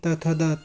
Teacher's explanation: जिनका उच्चारण स्थान ऊपर के दांतों पर जीभ लगने से होता है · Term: दंत्य